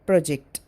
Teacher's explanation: And the word project is stressed on first syllable if it is noun. And if it is verb, it is stressed on the second syllable, project.